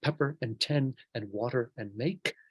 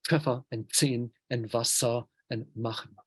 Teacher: So p, t, and k were changed to f and z and s and ch. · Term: consonant shift